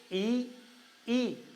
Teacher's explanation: ऐसा लगता है जैसे ओष्ठ जो है और ऐसे खिंच जाते हैं, फ्लैट हो जाते हैं